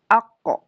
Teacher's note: kalau qaf itu pangkal lidah, ke arah langit-langit ya, lebih dalam daripada di atasnya langit-langit huruf kaf, atau secara bahasanya lebih mudahnya langit-langit yang lunak.